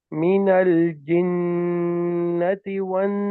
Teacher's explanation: the correct way to pronounce the gunna is to hold it for 2 counts. Not stretch it, but hold it like this.